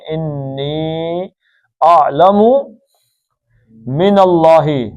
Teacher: لام اللہ کا موٹا کیونکہ پیچھے زبر